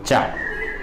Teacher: जब भी आप चा बोलेंगे आपकी जीभ ऊपर जाके दांतों के ऊपर लगेगी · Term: चवर्ग